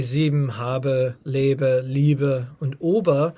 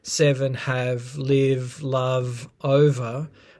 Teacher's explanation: a particular sound has shifted from being a stop to a fricative, with the sort of closest available place of articulation staying the same. It's just that the manner of articulation has changed from a B to a V.